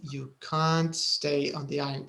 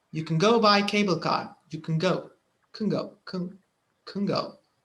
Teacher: بس في الجملة الإيجابية مش حتسمعها واضحة، ما فيش stress، حتسمعها كن.